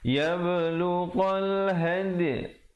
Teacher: dal qalqalah di situ, berikan pantulan ataupun lantunan